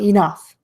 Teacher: You also might hear people say enough. I hear that a lot, especially when people are stressing that word. They'll make that E really long.